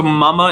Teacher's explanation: mama is nasalized because the M, you divert some of the airflow through your nose